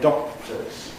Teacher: You can't hear usually the explosion of the K in doctors. You may get a glottal stop in Scotland. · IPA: [ˈdɒk̚təz]